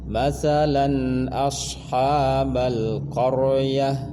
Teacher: Lam tanwin berseda bertemu hamzah idhar, diperjelas bunyi tanwinnya an, jangan ditahan, jangan didengungkan